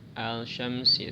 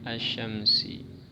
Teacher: Cara membacanya alif lamnya diidghamkan ya. Diidghamkan, dimasukkan ke shin. Jadi tidak dibaca al-syamsi tapi alif lamnya dimasukkan ke huruf bertasydidnya. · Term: alif lam syamsiyah